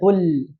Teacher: Huruf la itu di samping ujung samping lidah. Nah, lidahnya enggak metu.